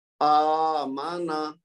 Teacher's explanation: اس کو آمانا نہیں کہنا کیونکہ وہ پھر حمزہ کے اوپر زبر سمجھا جائے گا. چونکہ کھڑا زبر ہے تو یہ مد کے برابر ہے، اور مد کا مطلب ہے 2 حرکت تک کھینچنا